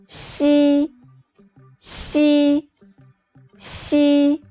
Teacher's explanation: Your tongue surface does not touch the hard palate.